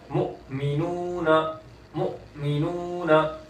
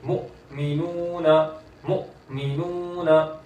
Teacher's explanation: हमजा साकिन है इसलिए झटका दे रहा हूँ